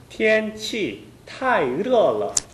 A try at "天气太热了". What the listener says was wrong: 热 할 때 혀끝이 입 천장에 닿았어요. 닿으면 热了 이런 발음이 납니다. 영어의 R 발음처럼 절대 입 천장에 혀끝이 닿아서는 안 됩니다. 太热了. 지금도 혀끝이 입 천장에 닿았죠? 예, 그 습관은 없어야 됩니다.